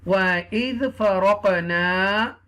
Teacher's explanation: you will stretch a little bit because this is the alif madda